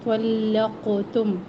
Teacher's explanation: تو کے بعد لام ہے، لام کو موٹا نہ پڑھے